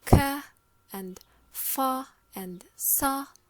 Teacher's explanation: all these are obstruents, but they are voiceless. They do not move the vocal cords. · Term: Fortis